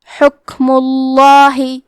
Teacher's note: آخری میں میم پہ پیش ہے تو یہاں لفظ الجلالہ کلام کا حکم ہے تفخیم تو ہم حرف اللام کو موٹی آواز میں پڑھیں گے